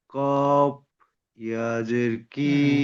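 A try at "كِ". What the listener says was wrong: একটা কফ একটা কাফ, প্রথমটা কফ তারপর কাফ।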